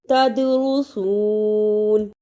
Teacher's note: دال جزم کی صورت میں حرف قلقلہ ہے، یعنی اس لفظ کو ہلا کر پڑھنا ہے